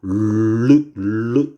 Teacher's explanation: 혀가 입천장을 막은 상태에서 양옆으로 소리가 흘러가거든요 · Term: 유음